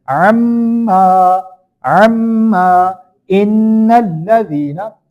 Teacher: Okay, I told you whenever mim mushaddad and noon mushaddad will become, we have to do gunna in there, like we hold the sound completely in nose